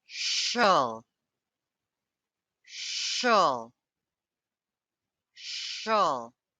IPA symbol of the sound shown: ʃəl